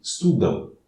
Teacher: Mas se as duas últimas letras forem AM, como estudam, o correto de pronúncia é um A seguido de um U brando. Estudam, é nasal. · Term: ditongo decrescente nasal